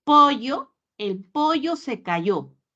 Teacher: no pronunciamos elle pronunciamos ye es parte de nuestra característica dialéctica